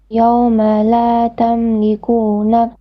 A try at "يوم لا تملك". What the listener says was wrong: Tamliku, short vowel. Tamliku. No, you're stretching the calf again.